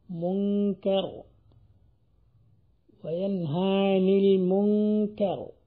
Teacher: നൂൻ സാക്കിനത്തായി വരുമ്പോൾ അതിന്റെ മഹ്റജ് തരിമൂക്കായി മാറും. ഇഖ്ഫാ ചെയ്യപ്പെട്ട നൂൻ അത് തരിമൂക്കിൽ നിന്നാണ് വരിക.